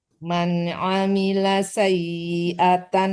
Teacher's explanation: Jangan ditekan ke nun ya, tapi disamarkan ke fa